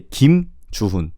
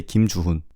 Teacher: You don't have to necessarily make an additional stop after the last name. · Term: without stopping